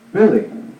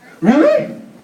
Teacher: Really. Falling intonation. Really? Rising intonation.